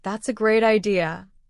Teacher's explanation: If I use a high falling tone with energy, it really means I think your idea is wonderful. But if I stretch my words and use a low rising tone like that's a great idea, it means the opposite. I am being sarcastic.